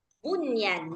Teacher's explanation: kalimat bunyan yang enggak perlu dibuat idgham bighunah di situ. Cukup dibaca izhar, bunyan. Jadi bukan buyan.